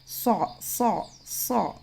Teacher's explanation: मुंह गोल नहीं होना है, होठ गोल नहीं होना है, इस बात का ख्याल रखें।